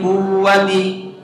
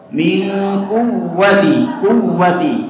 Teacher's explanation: Jadi bukan mad tapi dia waw yang bertasydid. Jadi tampakkan sifat an-nabr ya.